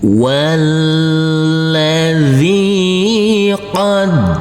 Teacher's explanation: Huruf dal kita tekan dan kita tahan saja dengan 2 harokat.